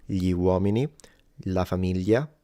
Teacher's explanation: you have to kind of move your tongue up against the roof of your mouth, l, to create the sound. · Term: gli sound